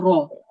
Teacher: So instead of ra, it's raw, thick, okay, and rounded